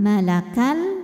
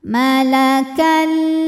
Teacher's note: tanwin dileburkan ke lam malakal tidak disertai dengungan Jadi cukup kita tekan saja malakall qual selanjutnya ada hukum tajwid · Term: idgham Bil ghunah